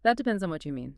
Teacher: Really listen to how my voice goes up at the end. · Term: rising intonation